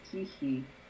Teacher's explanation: The K is palatalized, but we don't mark that